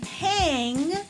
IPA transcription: hæŋ